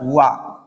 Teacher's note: ठीक है, दंत एवं ओष्ठ, ये इतना स्थान इसका है, दंत एवं ओष्ठ। वा का अर्थात वकार का स्थान दंत और ओष्ठ है, मतलब दंत्योष्ठ स्थान है उसका।